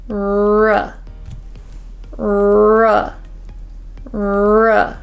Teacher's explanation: your tongue back for the r sound and let's go R we can round our lips a little bit more because this R is at the beginning of the word